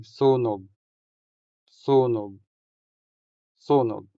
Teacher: The stress falls on the first syllable making o in this syllable longer than the o in the final syllable.